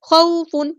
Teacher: واولین آئی ہے تو نرمی سے موڑیں گے